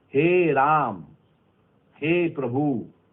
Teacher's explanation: स्वर में बोलने में हमको 3 मात्रा का समय लगता है, इसे हम प्लुत कहते हैं